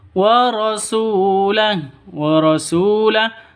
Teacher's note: Su panjang 2 ketukan karena ada wawu mati, diawali dengan dhammah, mad asli atau mad tabi'i.